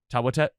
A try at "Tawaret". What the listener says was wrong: Tawadet. It's Tawaret. But the R is duh. It's a hard R. Tawadet.